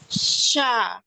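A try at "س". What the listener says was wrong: Bukan, ini masih tengah. Ukti. S, coba S dulu nanti bilang S.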